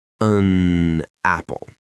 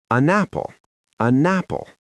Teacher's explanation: I do not stop the air flowing out of my mouth between the N and the A. I don't say an apple. · That pause feels unnatural. Instead, I push the N over to the next word.